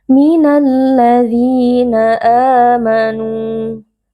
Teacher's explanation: ada ya sukun yang sebelumnya berharokat kasroh, dibaca panjang 2 harokat. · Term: mad tabi'i